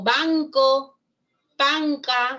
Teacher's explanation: nasal velar en el español es posible